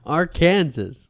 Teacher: the A in each syllable with the Italian sound, and the accent on the first and last syllables